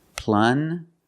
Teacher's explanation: Use the regular N and the j sound, like juice.